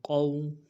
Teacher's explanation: قاف کو موٹا پڑھنا ہے، موٹا کرنے کے لیے زبان کا بیچ بھی اٹھائیں گے۔ یہ واو لین ہے، واو مدہ نہیں ہے۔